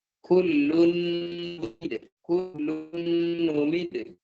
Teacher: Tanwin bertemu dengan nun, maka dia sempurna masuknya ke huruf nun. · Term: gunna idgham